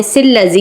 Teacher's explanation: من شر الوسواس الخناس. اب یہاں پر اگر ہم چاہیں تو ملا سکتے ہیں کیونکہ لام مشدد ہے